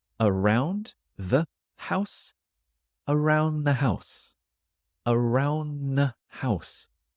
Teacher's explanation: The article becomes an N sound.